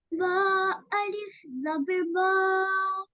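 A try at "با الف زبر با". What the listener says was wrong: No, this is ta. It has two dots upon it, so it is ta. Ta alif zabar ta.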